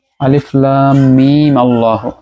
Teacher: মিমটাতে কসর করে বা এক আলিফ লম্বা করে